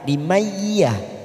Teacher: Nun sukun bertemu ya idgham bi gunnah. Kita tekan 3 ketuk siap masuk kata huruf ya.